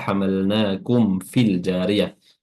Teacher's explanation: Mimnya izhar atau jelas.